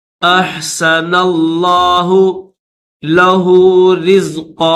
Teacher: یہ جو لفظ اللہ ہے اس لفظ اللہ کو بھی موٹا کر کے پڑھیں گے